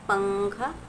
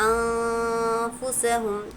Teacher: نون ساکن ہے، جزم والا نون، اور اس کے بعد جو فا ہے حروف اخفا میں سے ہے، تو نون کی آواز کو ہم کو ناک میں چھپا کر پڑھنا ہے